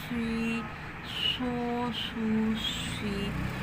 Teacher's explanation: سواد حروف صفیریہ میں سے ہے, اس میں سیٹی ہے, یعنی اس کی تیز سیٹی ادا ہوتی ہے, تیز مثل سیٹی, ٹھیک ہے.